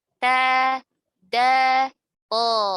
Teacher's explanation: To, dal, dan ta itu adalah keluar dari ujung lidah bertemu dengan pangkal gigi seri atas. Ujung lidah bertemu pangkal gigi seri atas.